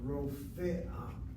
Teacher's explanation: You keep the fe there, but it's with a shvana, Rofe'ah. And what Israelis have a tendency of doing is they blend the fe with the aleph and they strike it out.